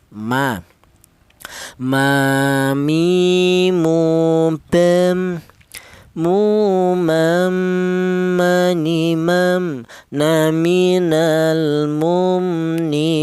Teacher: huruf mim ini keluarnya huruf berasal dari kedua bibir yang rapat ya. Kita bilang ma mi itu kedua bibir kita rapat dulu ya.